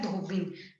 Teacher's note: लेकिन ई की मात्रा छोटी आएगी, जो धोबी है उसमें बी की मात्रा छोटी कर देनी है, धोबिन हो जाएगा।